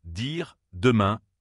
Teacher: même position que le T, mais cette fois la gorge vibre. C'est un sonore. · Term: Le son D